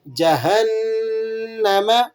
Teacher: غنہ کر لیں گے اور اسی طرح سختی کے ساتھ ادا کریں گے، مشدد ہے نون